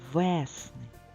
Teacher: Де звук е під наголосом і чітко чується